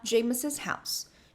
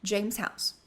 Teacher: esse S ele vai ser duplicado na pronúncia, tá? James's house.